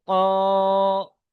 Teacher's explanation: আলিফের ইজরা দেখুন, আলিফের ডান দিকে জবর এসেছে, আলিফ মাদ্দা, আলিফ মাদ্দাকে এক আলিফ পরিমাণ টান দিয়ে পড়তে হয়।